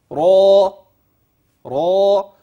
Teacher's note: انتبه ر مفخمه ليس في اخرها همزه بل را اخرها الف مديه وليس الف يابسه